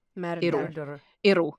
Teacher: Whereas when you say arrow like that, my tongue tip is whacking the roof of my mouth instead to produce a tapped R, not a molar R